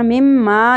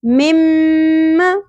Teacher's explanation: مم مشدد غنہ ہوگا لیکن زبر کو زیادہ نہیں کھینچنا